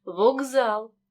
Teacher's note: глухий к перед дзвінким з тому він переходить у парний дзвінкий